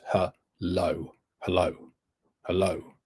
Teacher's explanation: Huh or low? It's stressed on the low. It's stressed on the second syllable.